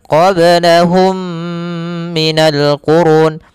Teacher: cara membacanya mimnya masukkan kepada mim kedua dan ditahan gunahnya · Kemudian pada lafal qablahum minal qurun ada mim mati bertemu dengan mim, maka ini kita namakan dengan idgham mimi. Cara membacanya, mimnya masukkan kepada mim kedua dan ditahan gunnahnya.